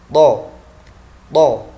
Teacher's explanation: Kemudian yang ketiga, lidah terangkat, isti'la, diikuti bibir yang mencucu.